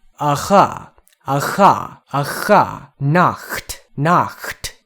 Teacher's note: it is a sound created by the friction of air hissing through a constricted passageway. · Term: voiceless velar fricative